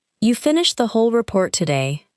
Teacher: The word whole may receive strong stress because the speaker is surprised that everything was completed.